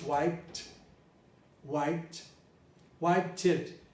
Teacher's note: he used the final t to create another syllable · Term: syllabication